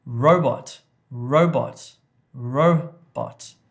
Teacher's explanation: So the emphasis, the stress is on the first part of the word